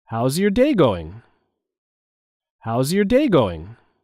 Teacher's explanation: there is a stress on the word day